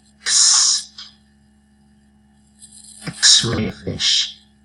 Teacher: it's the X ound it sounds like K and s together